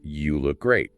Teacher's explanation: The main stress falls on look and great, not you. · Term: weak form